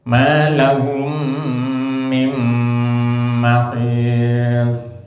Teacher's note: Begitu juga nun mati, min ketemu mim, maka nunnya didenggamkan, dimasukkan suaranya nun ke suaranya mim.